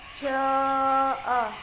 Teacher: Jaa mad wajib mutasil, karena mad tabi'i bertemu huruf hamzah di satu kalimat. Panjangnya 2,5 alif atau 5 harakat.